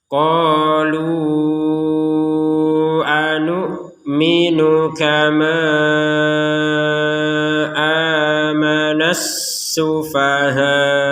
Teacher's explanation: Jadi dipanjangkan 4 sampai 5 harokat karena menggabungkan dengan huruf hamzah. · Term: harokat bendera